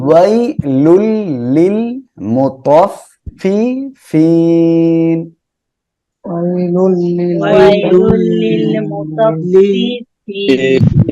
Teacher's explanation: ওয়াই লুল তানউইনের পরে ঈদগামে বেলা গুন্নার অক্ষর লাম আসছে, আমরা গুন্না বাদে মিলিয়ে পড়বো।